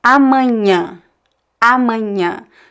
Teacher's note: So the first A is open, A, and the other two are nasal.